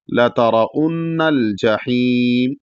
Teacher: جحیم، اس کے بعد بڑا ہا ہے، تو یہاں پر بھی بڑا ہا کو ادا کر کے جب رکیں گے تو کھینچ کے رکیں گے، تقریباً 3 سے 4 الف کے برابر